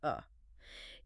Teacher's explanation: The schwa sound is basically that lazy unstressed vowel sound.